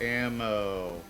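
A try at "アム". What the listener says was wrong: No, it's not ammo, it's amu.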